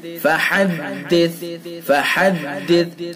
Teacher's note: وَأَمَّا بِنِعْمَةِ رَبِّكَ فَحَدِّثْ، فَحَدِّثْ فَحَدِّث ہا کو حلق سے، ہا کو حلق سے اور ثا کو نرمی سے پڑھیں گے